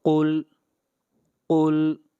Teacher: قاف حروف مستعلیہ میں سے ہے اور قاف کو ہمیشہ موٹا پڑھا جائے گا